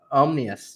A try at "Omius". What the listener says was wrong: Everyone else puts an N in there too. It's Omius, but that's all right.